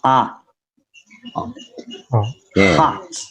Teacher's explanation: for the ah sound, you have to open the mouth and the tongue is in the center